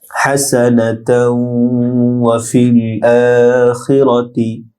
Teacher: হাসানাতাও ওয়া ফিল আখিরাতি, হাসা বড় হা ডিপ হবে দ্রুত উচ্চারণ, না তাও তাওয়ের সাথে গুন্না হবে , ওয়াফিল ফা লামের সাথে যুক্ত হবে, আখিরাতি এক আলিফ লম্বা